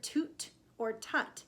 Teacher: we're ending with a t sound which when you say you can feel that the tongue is at the roof of the mouth